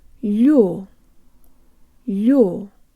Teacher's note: the L is soft so the tongue is high and forward there's almost a Y sound built in and the tongue moves from very high to very low in order to pronounce the full stressed o sound you'll you'll